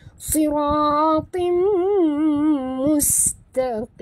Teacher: Tanwin bertemu dengan mim. Dengung. Tutup mulut rapat. Idgham ma'al gunah.